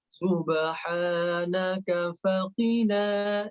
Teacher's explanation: Faqina, na-nya yang dibaca panjang.